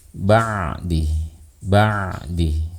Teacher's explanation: Nah, di sini ada ain mati. Ain sifatnya bainiyah, sama seperti lam. Oleh karena itu kita di sini akan mengalirkan sedikit suaranya